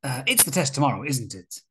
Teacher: a falling intonation shows that you are asking for agreement, or that you are more sure of the answer